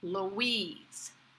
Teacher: Very relaxed, with the stress on the second syllable